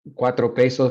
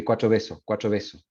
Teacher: We have that in Chilean Spanish too, when you have a voiceless occlusive between vowels, sometimes it becomes voiced